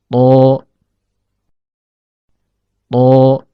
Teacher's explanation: Huruf to keluar dari ujung lidah yang bertemu dengan pangkal gigi seri atas.